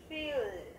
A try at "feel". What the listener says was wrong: Feel. Có âm L đàng hoàng không?